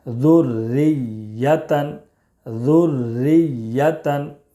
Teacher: ری ذر ری یا زبر یا تا دو زبر تن ذریتن را مشدد کے نیچے زیر ہے اس لیے را کو باریک پڑھیں گے